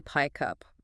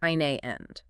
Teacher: To maintain airflow, the final consonant sound simply jumps over to the beginning of the next word. So pickup becomes phonetically pike up, or a phrase like in the end sounds like eine end. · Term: linking